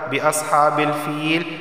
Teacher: یا ساکن سے پہلے زیر آیا ہے تو اسے بھی ایک الف کے برابر کھینچ کر پڑھا جائے گا